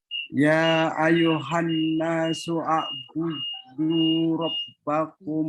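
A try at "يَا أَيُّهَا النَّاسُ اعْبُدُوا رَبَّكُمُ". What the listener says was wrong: Ya ayuhan nasu ubudu. Ini hamzahnya hamzah wasal, tidak dibaca. Ya ayuhan nasu a'budu.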